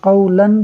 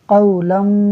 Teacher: یعنی نون تنوین کا نون میم سے بدل جائے گا